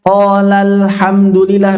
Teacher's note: Ketika ada huruf mad bertemu sukun pada kata berbeda, maka yang dilakukan adalah hudhif. Dihapus madnya.